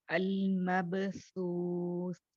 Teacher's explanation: And what happens is when you pronounce this letter, you will not hear the sound of the letter, but the sound gets cut and you will hear the whispering sound or the breath sound. जो सांस आपकी चलती है ना वो सुनाई देगी, आवाज बंद हो जाएगी जब आप इसको अदा करोगे.